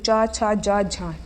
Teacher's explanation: जब मुख द्वार को बंद करके इस प्रकार बोलते हैं कि हवा स्थानों को कुछ रगड़ती हुई चलती है। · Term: स्पर्शी व संघर्षी व्यंजन